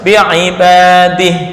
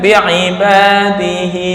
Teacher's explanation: Nah, ini wakofnya harus bi'ibadih. Nggak boleh bi'ibadihi.